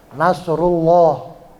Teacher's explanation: lafaz Allahnya bacanya tafkhim berat